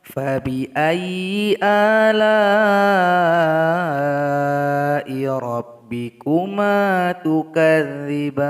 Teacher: La ini mesti dipanjangkan selama 6 harokat atau 6 ketukan karena merupakan mad wajib muttasil.